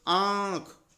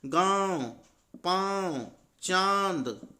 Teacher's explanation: ऐसे वर्ण जिनका उच्चारण करने पर नाक और मुंह दोनों से आवाज आती हो, उन्हें हम बोलते हैं, क्या बोलते हैं, अनुनासिक वर्ण।